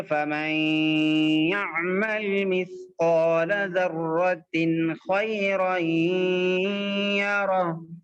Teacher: بالکل ہی نون کو غائب نہیں کریں گے بلکہ ناک میں روک کے پڑھیں گے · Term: غنے